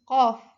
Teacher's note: yaitu bunyi langit-langit belakang dia itu ada letupan qof. Qof terus ee majhur bergetar qof dan mufakham dia itu tebal.